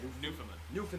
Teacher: With the emphasis on the new.